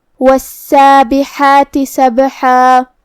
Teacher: ہمیں حرف السین کو 2 حرف کے برابر ادا کرنا ہے کیونکہ اس پہ تشدید ہے